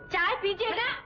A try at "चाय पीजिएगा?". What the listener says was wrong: अरे काटती क्यों है? प्यार से कहना चाय पीजिएगा?